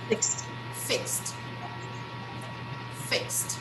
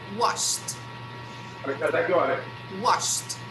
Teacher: So whenever I pronounce this regular verb in the past, I'm going to put the sound of T. I will never pronounce ED.